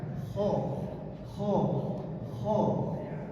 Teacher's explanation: Kalau Bapak dan Ibu bisa merasakan, ho ini berada di ujung tenggorokan. Ho, bukan ha berharakat o, enggak, ho.